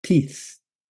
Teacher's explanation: The sound comes from when the air is flowing out, when your tongue is between your teeth. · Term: unvoiced sound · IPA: /θ/